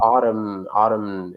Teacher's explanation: it's actually a little bit difficult to say that words because that T has a little bit of a like an Italian R sound